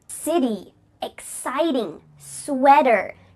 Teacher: change your T sounds to D sounds when they're between 2 vowels